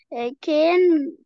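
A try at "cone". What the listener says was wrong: لا لا not كان اون كون يا هي صح بس فيها لونج ايه بقى long O مش بقول كو O O plus consonant plus magic E مش احنا قلنا O وحرف ساكن و E هيديك long O قلت كون بون فهمتوا؟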